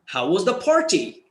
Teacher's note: rising tone because you know it was good